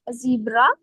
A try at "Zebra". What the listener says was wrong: Not zebra. Zebra is English. It's E is A, right? So it's zebra.